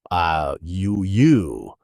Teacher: And it's pronounced with the tense back vowel